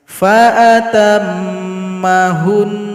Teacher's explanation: jadi Nun di sini kita sukunkan lalu dengungkan dua harakat faatamahun jadi bunyi nunnya kita lebihkan